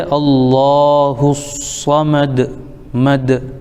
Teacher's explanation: دال حروف قلقلہ میں سے ہے، جب اس پر وقف کیا جاتا ہے تو اس کی آواز لوٹ کر واپس آتی ہے